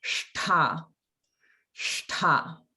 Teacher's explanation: So it's the retroflex shta, but it's mahaprana. So it comes out like shta, shta.